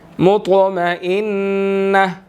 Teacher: مطمئنہ، طا یہاں پر ساکن ہے، قلقلہ ہوگا اس کے اوپر کیونکہ قلقلہ حروفوں میں سے بھی ہے اور موٹے حروفوں میں سے بھی ہے، یہاں پر ہم نے اس کو موٹا بھی کرنا ہے، ٹھیک ہے. مطمئنہ، نون مشدد آ گیا، یہاں پر ہم غنہ کریں گے